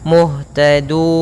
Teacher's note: Muhtadun itu kalau kita panjangkan 6 harokat. Kalau 2 muhtadun, 4 muhtadun. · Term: mat arid disukun